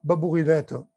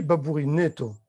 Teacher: surtout n'hésitez pas à prononcer le E placé avant le T de façon fermée. On ne dit pas babourinette, on dit babourinetto.